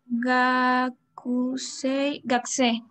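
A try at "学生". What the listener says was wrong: Muy bien, Gakusei, Gakusei.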